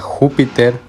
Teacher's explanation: la sílaba tónica se encuentra en la antepenúltima sílaba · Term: esdrújula